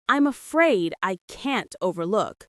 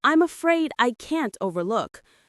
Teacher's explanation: Stresses on afraid and look in overlook. The can't is very distinct and strong here.